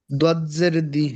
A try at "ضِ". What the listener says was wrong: দজ্জের দি না, দি বললে দাল হয়ে যায়। দালের উচ্চারণ আহ, একরকম। হ্যাঁ, দাল। দতের উচ্চারণ আরেক রকম। দতের উচ্চারণ হচ্ছে জিহ্বার গোড়ার কিনারা উপরের মাড়ির দাঁতের ঘোড়ার সঙ্গে লাগিয়ে লদ, লদ, ওয়ালাদ, লদ, লদ, ওয়ালাদ দলিন।